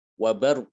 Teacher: tidak ditempelkan ujung lidahnya tapi dia langsung masuk ke hurufnya ya disertai dengan suara dari hidung